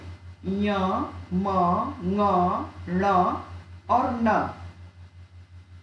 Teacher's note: मुख के साथ नासिका का भी प्रयोग इन वर्णों के उच्चारण में होता है, अर्थात नासिक के वर्णों में मुंह से ज्यादा नासिका की सहायता ली जाती है। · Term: नासिक वर्ण